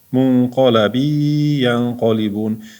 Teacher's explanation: Bu idg'om qoidasi. Tanvin yoki sukundan keyin ya harf keldi. G'unnali idg'om.